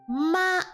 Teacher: the first tone is a flat tone where you literally just stay on one line